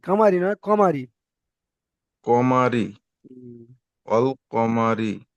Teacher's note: এখানে মুখ গোল হবে না তাহলে এটা বারিক হয়ে যাচ্ছে র নিচে জের আছে রটা বারিক হবে